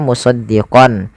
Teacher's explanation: bila gunah Idam artinya memaksukkan bila gunah tanpa diserai dengan gunah jadi kita hanya memasukkan saja tanwinnya kepada huruf lam dan tidak ditahan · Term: Idam bila gunah